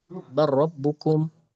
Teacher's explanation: Namun ketika ketemu lam atau ro ya hukumnya idgham. Contohnya yang ro misalkan ee barabbukum ya itu diidgamkan tidak diizidharkan